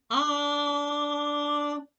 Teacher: струмінь повітря виходить вільно не зустрічає перешкоди на своєму шляху звук а ми можемо проспівати